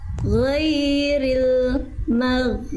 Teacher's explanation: Mimnya tipis, goinnya baru tebal. Jangan jangan maknya ikut tebal goin.